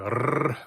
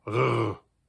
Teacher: Bavarians actually roll their R's, unlike regular Germans. So an R in Bavarian is always a R, whereas in standard German it would be a R.